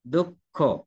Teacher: দুঃখ শব্দে মূলত খ আছে মহাপ্রাণ ধ্বনি। আর মহাপ্রাণ ধ্বনি বিধায়, বিসর্গের পরে মহাপ্রাণ ধ্বনি বিধায়, মহাপ্রাণ ধ্বনি দুইবার হবে এমনটি নয়, বা হতে পারে।